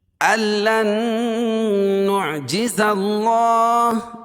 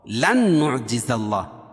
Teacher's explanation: ال میں غنہ نہیں کریں گے، لن میں غنہ کریں گے